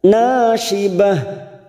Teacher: Tunna, na fathah diikuti alif, dua harakat, nasyibah, syibah ujungnya sama kita rem, tak marbutoh yang berharakat duma tanwin, syibah ujungnya seperti membaca huruf ha